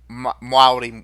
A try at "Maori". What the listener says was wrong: You added a W in there.